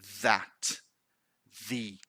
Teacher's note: the voiced th we can feel and we produce vibration